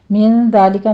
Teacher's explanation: زال کو نرمی سے پڑھیں گے، سیٹی کی آواز نہیں آنی چاہیے